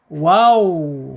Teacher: Wawu ini makhrajnya ada di asyafatain, dua bibir ya.